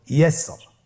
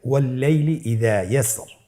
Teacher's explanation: এখানে র হরফটিকে পাতলা করে পড়তে হবে, এখানে মোটা করে পড়ার কোনো সুযোগ নাই।